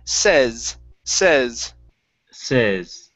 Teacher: instead of saying says with a long a it's a short e